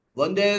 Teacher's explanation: వందే అన్నప్పుడు పెదాలు రెండు కలవు. ఎందుకు కలవు అంటే పూర్ణానుస్వారం పూర్తిగా పలకట్లేదు అక్కడ. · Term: వందే నకారం